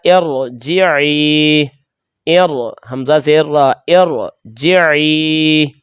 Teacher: را ساکن سے پہلے عارضی زیر کی حرکت ہو، یعنی کہ وہ وقتی طور پر کام چلانے کے لیے ہم اس حرف کے نیچے زیر لگائیں گے، تو اس صورت میں ہم را کو پر پڑھیں گے۔ جیسے یہ دیکھیں را ساکن ہے، اس سے پہلے ہم نے عارضی زیر لگائی، تو اس صورت میں ہم اس را کو پر پڑھیں گے، تو بنے گا ارجعی، ار حمزہ زیر را، ارجعی۔